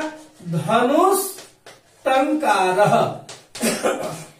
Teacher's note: विसर्ग के बाद ट है तो विसर्ग मूर्धन्य स में बनेगा